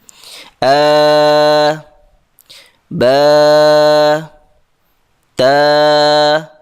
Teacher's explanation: ketika kita mengucapkan huruf alif yang panjang maka dia akan keluar dari rongga tenggorokan dan rongga mulut